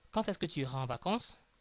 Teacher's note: I said quand est-ce que, as if quand was ending in t sound.